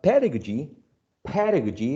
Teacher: the word pedagogy pedagogy is stressed on the first syllable